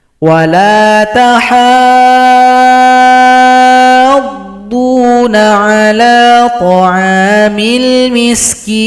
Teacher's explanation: Panjangkan ha 6 ketukan atau 6 harokat baru tasydid pada huruf dhad. Ini adalah mad lazim mutsaqqal kalimi.